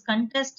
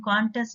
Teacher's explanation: You give a stress in the second syllable and you give a stress in the first syllable in the second case.